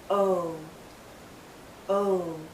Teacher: But as we come to the end of this vowel sound, our lips become even tighter. It finishes actually with a slight oo sound. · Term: long vowel sound